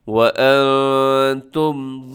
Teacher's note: نون ساکن کے بعد تا ہے، تو اخفا کرنا ہے